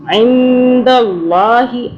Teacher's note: عین کو حلق سے پڑھنا